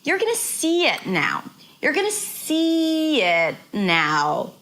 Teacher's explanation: see is the word that sticks out, that is longer.